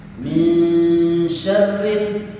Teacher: dipastikan huruf ro yang keluar getarannya minimal 2 getaran. Hukum ro-nya adalah 2 getaran.